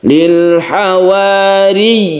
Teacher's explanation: Lil hawariyin, yi-nya itu harus jelas, itu namanya mad tamkin. Kita tasydidkan dahulu baru kita panjangkan ya-nya.